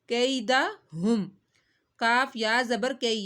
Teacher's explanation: یا ساکن سے پہلے زبر آ رہی ہے تو یا مدہ نہیں کرنا ہے، یہاں پہ یا لین کرنا ہے، کیونکہ اگر یا ساکن سے پہلے زیر آتی تو یا مدہ کیا جاتا، لمبا کیا جاتا۔